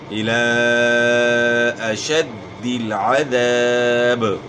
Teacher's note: یہاں کھڑا زبر الف مدہ کا قائم مقام ہوتا ہے، تو کھڑا زبر کے بعد حمزہ ہے، تو یہاں آپ نے جو ہے نا 3 سے 4 الف کی مقدار کے برابر مد کرنا ہے، کھینچنا ہے. · عین کی آواز گلے کے درمیان سے نکالنی ہے. ذال کو اپنے مخرج سے ادا کرنا ہے، یعنی زال نہیں پڑھنا، ذال پڑھنا ہے.